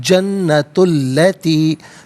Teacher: ہم پڑھیں گے تلکل جنتو، جنتو اور اللتی، جنتو میں تا پر پیش ہے، اسے اللتی کی لام کے ساتھ ملائیں گے، درمیان میں سے الف یعنی حمزہ کو حذف کیا جائے گا